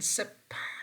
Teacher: Sip is also voiceless alveolar fricative.